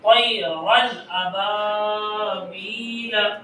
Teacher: نون کی آواز کو ظاہر کر کے پڑھیں گے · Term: اظہار